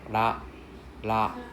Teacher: there's no R sound in Japanese. It's not r. Usually we pronounce as L sound.